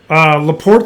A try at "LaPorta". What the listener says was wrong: I think it's Laporta, dude. Yeah, add the A, not the E.